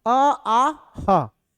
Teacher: कंठ से मतलब हमारा उच्चारण स्थान यहां कंठ से होता है। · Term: कंठव्य वर्ण